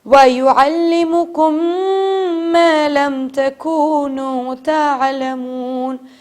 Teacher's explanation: ابھی والا رول میں بتا نہیں رہی لیکن آپ پہلے سے ہی اس پہ غنہ کیجئے تھوڑی دیر کیونکہ میم کے اوپر تشدید ہے